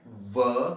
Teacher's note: एक दांत टच हो रहे हैं ऊपर वाले और नीचे वाला होंठ, इसलिए इसको कहते हैं दंतोष्ठ, अर्थात इसका उच्चारण करते समय दंत और ओष्ठ एक साथ काम करते हैं, इसलिए इसे कहते हैं दंतोष्ठ।